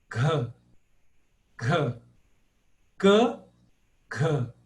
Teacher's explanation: O segundo som, ele tem uma aspiração, um H depois. Eu tenho que falar esse H mesmo.